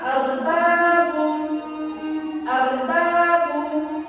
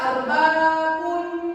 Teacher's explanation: Harus seolah ba tersebut harus menyatu dengan huruf mim tersebut. Kalau arbabun kan tidak ada bergema di mulutnya. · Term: idgham biguna